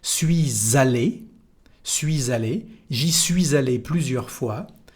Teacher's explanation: We have here a liaison between the two parts of the passé composé.